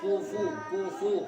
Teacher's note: जब पेश को अदा करते हैं तो उसमें होठ गोल हो जाते हैं